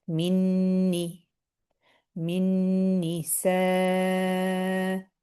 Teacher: What happens is both are merged together, and it's called idgham mutamathilain, meaning just merging of 2 letters that are the same.